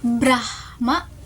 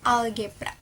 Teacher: Gugus konsonan B diucapkan dengan mengucapkan huruf B diikuti langsung oleh huruf R. Dalam pengucapan lidah bergerak dari posisi untuk mengucapkan B ke posisi untuk mengucapkan R tanpa adanya vokal di antara keduanya. Pengucapan B mulailah dengan mengucapan B dengan bibir tertutup yang transisi ke R. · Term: gugus konsonan BR